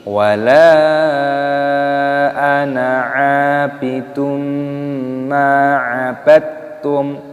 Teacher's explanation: Perhatikan di sini lam alifnya dibaca panjang, ada mad jaiz munfasil dipanjangkan 5 ketukan, dan di sini nunnya tidak dibaca panjang ya, ada tanda seperti ini.